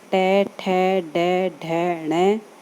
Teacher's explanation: री और पूरा टे वर्ग टे, ठे, डे, ढे, णे, रे और से, इनका उच्चारण स्थान मूर्धा है